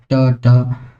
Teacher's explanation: ये वर्ण हमारा दांत से जस्ट ऊपर जीव वहां टच हो रही है इसलिए मूर्धन्य